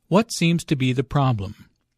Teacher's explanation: Notice that the intonation falls at the end of the question.